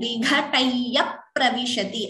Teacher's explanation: again the p is doubling. So dvitvam here also.